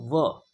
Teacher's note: दंत प्लस ओष्ठ, अर्थात दंत और ओष्ठ दोनों से बोला जाने वाला वर्ण होता है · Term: दंत ओष्ठ वर्ण